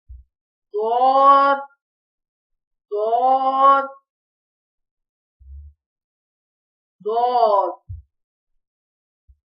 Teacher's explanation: زبان کے موٹے کنارے اوپر کے داڑوں سے لگے تو ضاد ادا ہوتا ہے، موٹا پڑھا جائے گا۔